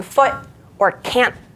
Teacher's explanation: are instead of pronouncing the word with that robust t sound they're actually um using what we call a glottal stop which is where instead of pronouncing it with your um tongue you're just closing your throat almost like with your um where your vocal cords would be